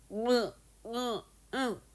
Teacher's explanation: 코로 공기 내보내면서내는 소리가 비음이었지. 그러면은 코 사용하는 소리가 비음.